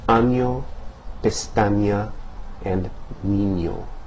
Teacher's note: are all considered nasal consonants because when you pronounce those, the air resonates primarily in the nasal cavity and not in the mouth where they're produced, when they're produced.